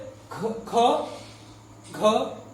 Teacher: जब हम ख को उच्चारण करते हैं तो उसके अंत में ह भी उच्चारित होता है। घ का उच्चारण करते हैं, उसमें भी घ, ह, घ, ह का उच्चारण होगा। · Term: महाप्राण व्यंजन